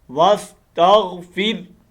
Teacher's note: یہ حمزہ وصلی ہے، گر جاتا ہے وسط کلام میں